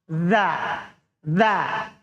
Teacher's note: tempat keluarnya adalah ujung lidah ketemu ujung gigi atas